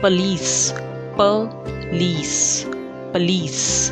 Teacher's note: The stress is on the last syllable.